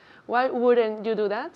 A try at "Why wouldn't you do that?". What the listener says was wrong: Why wouldn't you do that? Do is much more hard. The sound is hard. D.